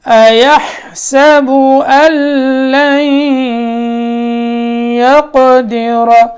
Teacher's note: ہا حلق کے بیچ والے حصے سے، جو ہڈی ہے وہ بیچ والا حصہ ہے.